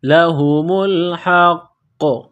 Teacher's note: قاف پر قلقلہ کریں گے